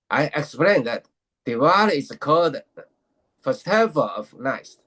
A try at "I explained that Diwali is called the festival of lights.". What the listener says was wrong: Did you even say the word the? Because I didn't hear the word the at all. Diwali is called the festival. Just say it slowly. Diwali is called the festival of lights. Let's say it clearly, slowly and clearly. I explained that Diwali is called the festival of lights. Let's just say the word the.